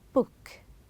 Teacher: when we say book you are stopping the air flow with the B with your lips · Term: B sound